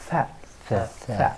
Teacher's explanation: So it's voiceless. We don't have any vibration.